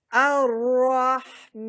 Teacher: یہاں را کے اوپر تشدید ہے تو را کو موٹا کریں گے